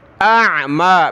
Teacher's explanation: حمزہ عین زبر پہلے حمزہ کی آواز پھر عین کی